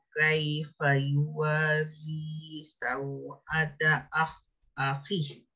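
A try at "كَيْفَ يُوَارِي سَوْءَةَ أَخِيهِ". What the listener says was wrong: Panjang, yang akhih itu ma'ari sukun.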